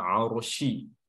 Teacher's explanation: Arsy, huruf ra-nya tebal ya, karena didahului oleh huruf yang berharakat fathah, arsy ya. Shi.